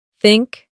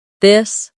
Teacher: The tongue comes gently between the teeth. For think it's soft. For this it's voiced. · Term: th sound